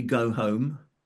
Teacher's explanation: One is that H is often dropped. So the H is dropped.